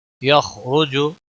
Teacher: خلق من ماء دافق يخرج من بين الصلب والترائب، یخرج خا اور را دونوں پر پڑے جائیں گے، را پیش کی وجہ سے پر پڑا جائے گا